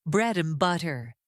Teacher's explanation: Now let's practice the word and. When reduced it becomes n.